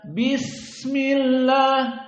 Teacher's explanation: Bis ada s-nya agak panjang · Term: rokhawah